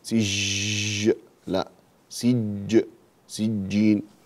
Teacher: عندنا هنا في العربية الجيم شديدة وليست رخوة، فنقول سجين وليس سجين، سج لا سج سجين.